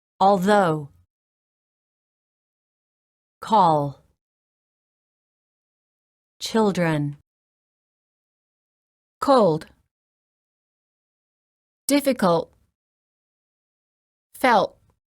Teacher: just the same as when creating the T and D sounds the Airstream flows through the sides of the tongue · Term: American L